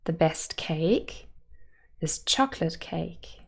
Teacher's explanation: chocolate has 2 syllables and the main stress would be on the first